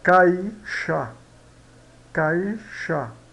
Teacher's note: O A é vogal, o I semivogal. Então, vogal mais semivogal, decrescente. Então, nós temos um ditongo decrescente.